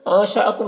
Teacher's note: بھی کھینچ کر پڑھ سکتے ہیں، انشأکم نون میں فا ہوگا، نون کی آواز کو ناک میں چھپا کر پڑھیں گے